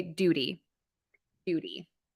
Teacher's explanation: What is the American pronunciation of duty? I actually say a flap T here, which I teach as a quick D sound.